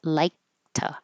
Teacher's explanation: You're going to hold the tongue in the K position and not say like, but like to.